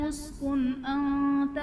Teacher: یا آدم اسکن انت میں نون ساکن کے بعد حروف حلقی میں سے حمزہ ہے تو یہاں پر اظہار کا قاعدہ ہوگا، یعنی نون ساکن میں ہم غنہ نہیں کریں گے